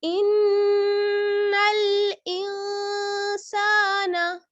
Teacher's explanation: आगे लाम साकिन है तो नून को लाम से मिला लीजिए